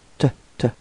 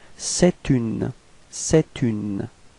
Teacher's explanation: you can see this liaison between c'est and une. Okay? So the liaison would sound like t, t.